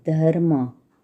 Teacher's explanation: we pronounce as dha plus half ra plus ma, dharma. र के रेफ वाले रूप में र स्वर रहित होता है।